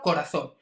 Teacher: veis que la fuerza recaiga al final de la palabra · Las palabras agudas siempre llevan tilde cuando terminan en vocal N o en S, pero tiene que ser aguda, ¿vale? Es decir, la sílaba tónica tiene que estar en la última sílaba, como por ejemplo corazón. Veis que la fuerza recae al final de la palabra corazón. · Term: palabra aguda